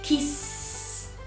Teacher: I'm not producing any sound. It's just air, like a snake. So because there is no sound, you need a t sound, a t.